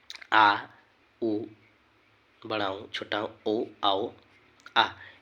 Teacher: अपने जीभ को जो हम जिह्वा बोलते हैं, जीभ है उसके 3 भाग में, जो आगे वाली जीभ थोड़ा सा निकालते हैं उसमें उससे अग्र स्वर, उसके बीच से जो शब्द को हम बोलते हैं उससे मध्य स्वर, और उसके अंत के जो अंत से जो आवाज़ आती है, मेरे जीभ के अंत से आवाज़ आती है उससे पच स्वर कहते हैं